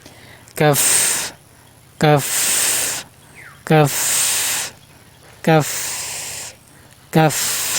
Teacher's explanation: জিহ্বার গোড়া থেকে একটু আগে বাড়িয়ে তার বরাবর উপরে তালুর সাথে লাগিয়ে উচ্চারণ করবেন